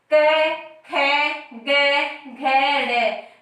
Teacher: जब भी हम इनका उच्चारण करते हैं तो कहाँ से उच्चारण होता है? हमारे गले से या कंठ से